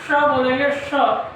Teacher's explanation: इसका सही उच्चारण तभी होगा जब जीभ को तालु में सटाकर पीछे मोड़ेंगे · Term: मूर्धन्य